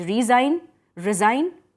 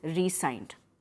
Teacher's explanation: Over here, when we are including a hyphen between re and sign, this sign is pronounced, the S is pronounced as S only, and you emphasize the first syllable.